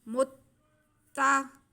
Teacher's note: ता मुशद्दद है इसलिए मीम की पेश को हम ता के साथ मिलाएंगे। मुत्ता, थोड़ा सा रुक के शद को मिलाते हैं।